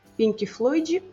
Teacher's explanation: Em português, se uma palavra termina em k ou em outras consoantes atípicas, adicionamos um i curtinho depois